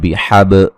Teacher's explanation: बा पे कलकला करेंगे